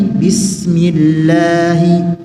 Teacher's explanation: tipiskanlah pengucapan lam pada kata bismillah